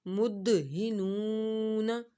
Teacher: نون واو پیش نو، مدہنون نون زبر نا مدہنون نون کو ہم نے لمبا کیا، نون ساکن سے پہلے پیش آ رہی ہے، اس وجہ سے یہاں پہ واو مدہ ہو رہا ہے، ایک الف کے برابر ہم نے کھینچنا ہے